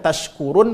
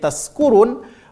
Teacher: Kalau shin tempat keluar hurufnya adalah tengah lidah, sedangkan huruf sin tempat keluar hurufnya adalah ujung lidah. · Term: huruf shin